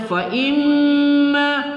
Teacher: mim bertasydid wajib al-gunnah atau wajib kita dengungkan. Fa imma, ma kita baca satu alif dua harakat.